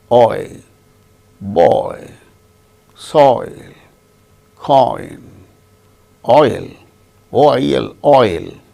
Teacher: Starts with A, ends with E, I. Similarly, another diphthong or double vowel sound, oi, starts with O, ends with E